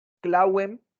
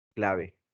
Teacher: pasó de una semiconsonante a una fricativa